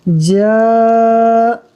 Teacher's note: الف مدہ کی جو مقدار ہے یعنی 1 الف 2 حرکات کے برابر اتنا ہی کھینچیں گے۔ جا بس، حمزہ زبر آ، حمزہ کے اوپر حرکت ہے اس لیے اس کو بغیر کھینچے پڑھیں گے۔